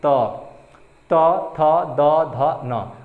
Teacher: आपकी जो जीभ है यानी कि जबान है वो कहाँ टच कर रही है, दांतों को टच कर रही है, इसीलिए इसको हम दंत बोल देते हैं, दंत, यानी कि दंत से, दांत से बोला जाता है।